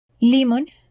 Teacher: So, for instance, we have the word limón. Its stress is on the vowel O, just right where the accent mark is.